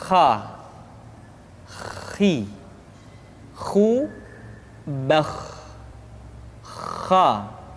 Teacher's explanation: pengucapan huruf kha persis terdengar seperti orang yang tidur dalam keadaan mengorok.